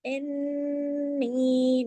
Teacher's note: नून के ऊपर तशदीद है, गुन्ना हुआ बड़ा, इन्नी, नून या जेर नी, या मद्दा भी है ना साथ, पूरा हक अदा करना है।